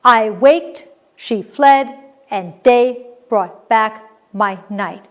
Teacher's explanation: a pattern of five feet each having one unstressed and one stressed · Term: iambic pentameter